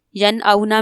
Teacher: ین اونا میں نون ساکن کے بعد حمزہ ہے اور حمزہ حروف حلقی میں سے ہے تو یہاں پر اظہار ہوگا یعنی غنہ نہیں کریں گے